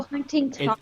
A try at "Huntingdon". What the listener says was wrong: It's Huntingdon, like D-O-N at the end.